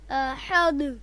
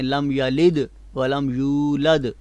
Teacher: تو جہاں بھی مثلا کہ آپ یہاں پر جو ہے وہ ہم دیکھ رہے ہیں لم یلد ولم یولد، تو یہاں پہ آپ دیکھ رہے ہیں کہ حرف دال پر جو ہے وہ جزم ہے، حرف دال ساکن ہے. تو یہاں ہم کس طرح پڑھیں گے اس کو؟ جنبش کے ساتھ اور ابھار کر پڑھیں گے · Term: قلقلہ